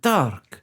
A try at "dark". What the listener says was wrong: We gotta roll those R's